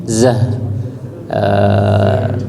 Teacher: zahnya pendek, bukan za tapi zah. Dia pendek dan terakhirnya ha ya